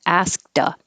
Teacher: you won't hear the k